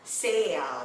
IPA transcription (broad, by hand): seɪl